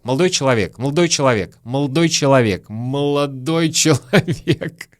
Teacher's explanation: Слово «молодой» немножко съедают, проглатывают.